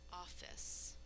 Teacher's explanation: in normal speech when we say office we only hear one F sound but we sound it twice for spelling since there's a double